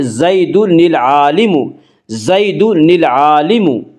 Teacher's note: جب تنوین والا لفظ معرف باللام کے ماقبل ہو تو نون تنوین کو کسرہ دے کر لام کے ساتھ ملا کر پڑھیں گے